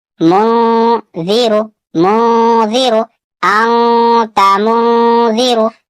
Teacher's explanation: یہاں پہ نون ساکن کے بعد زال ہے اور زال حروف اخفا سے ہے، یہاں بھی اخفا ہوگا. نون ساکن کی آواز کو ناک میں چھپا کر پڑھنا ہے